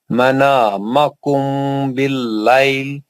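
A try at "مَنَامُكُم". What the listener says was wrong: منامکم نہیں ہے، پیش ہے میم پہ.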